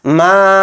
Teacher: عابدون، میم کے ساتھ الف مدہ ہے، یعنی اس کے اوپر مد منفصل ہے تو میم الف زبر ما کو 3 الف کی مقدار کھینچیں گے